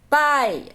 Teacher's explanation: Então, a semivogal é o I. Pai, aqui o A tá mais forte. Então, a semivogal é a letra I.